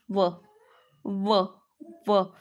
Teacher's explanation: दात पण आहे ओठ पण आहे म्हणून हा झाला दंतोष्ठ